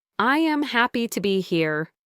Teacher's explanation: His voice was very flat and he put almost equal stress on every word. He meant to express a friendly, happy sentiment, but the way he said it sounded a little stiff, like a simple statement of fact. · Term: flat tone